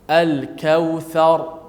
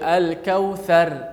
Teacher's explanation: Al-kautsar, ra tu dimati dengan tebal. Tak boleh baca al-kautsar, itu nipis.